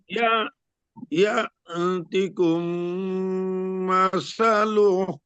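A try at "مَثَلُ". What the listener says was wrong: মাসালু, মাসালু দ্রুত পড়তে হবে এখানে, মাত নাই তো, মাত না থাকলে দ্রুত পড়তে হয়।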